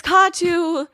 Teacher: the emphasis is on the first syllable and not the second.